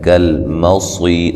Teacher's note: صاد کو موٹا ادا کریں گے اور یہ یا مدہ ہے، تو وقف کی صورت میں را کو باریک پڑھیں گے، ملانے کی صورت میں را موٹی ہوگی۔